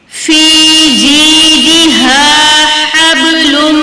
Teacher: با کے پر قلقلہ ہو رہا ہے لیکن یہاں پر قلقلہ صغرا ہو رہا ہے